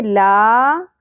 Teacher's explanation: الف ہے حرف مدہ، 1 الف کے برابر کھینچیں گے